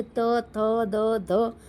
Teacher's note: दंत इसके उच्चारण से जीभ दंत के ऊपरी भाग को छूती है।